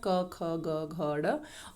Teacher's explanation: और ये कंठ से बोले जाते हैं, यानी कि इनका उच्चारण स्थान कहाँ होता है, कंठ। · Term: क वर्ग